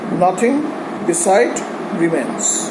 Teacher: nothing obviously does not follow the iambic pattern. The first syllable is stressed, and so is beside.